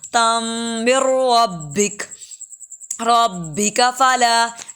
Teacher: ایک تو غنہ بھی کرنا ہے، پھر میم کو را سے جوڑنا ہے۔